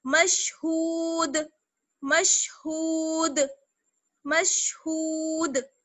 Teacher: یہ دال جو ہے وہ قلقلہ میں سے ہے، اس لیے آواز لوٹ کر واپس آئے گی